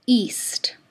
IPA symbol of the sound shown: ʔ